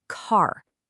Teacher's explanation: The a sound is just gone. It's been totally replaced by that r sound. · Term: R controlled vowels